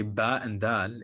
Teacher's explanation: your vocal cords activate before the release of the sound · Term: pre-voicing